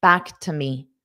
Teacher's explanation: this to is pronounced as a t because it's an unstressed preposition